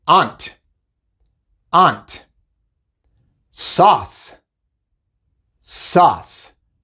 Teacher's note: Primero tenemos A, U. Esta combinación simplemente se pronuncia A, como la A en español. La U se podría decir que es muda.